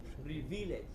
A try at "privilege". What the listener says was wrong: don't make the second syllable longer. It is just the first thing. Privileged.